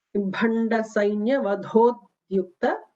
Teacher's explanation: Note that Bha is a Mahaprana, Vadho is a Mahaprana, followed immediately by a Dyu, which is an Alpa Prana.